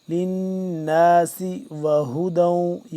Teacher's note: نون ساکن نون مشدد ہے اس کے اوپر غنہ کریں گے